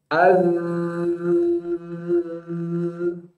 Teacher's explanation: Mengalir suaranya. Tidak disertai dengan hembusan nafas. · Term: rohwah